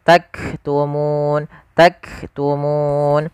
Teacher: tahan dulu suara kafnya karena dia sukun sebagaimana huruf ta, ak, baru nafasnya kita lihatkan.